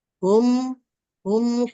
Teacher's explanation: dilebur dilebur dan ditasjidkan agak ditekan dan didengungkan · mim sukun ketemu dengan Fa itu izhar Safawi dibaca jelas mimnya